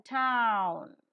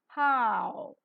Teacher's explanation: is rounded the diphthong is rising yes it is rising closing because it is moving towards close and a wide glide because it is crossing all the three